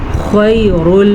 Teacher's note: خا کو پر پڑھنا ہے کیونکہ خا حروف مستعلیہ میں شامل ہے